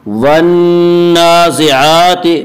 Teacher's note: کھڑا زبر کو 1 الف کے برابر کھینچ کر پڑھیں گے